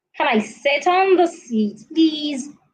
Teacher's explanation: you're asking a question your tone should fall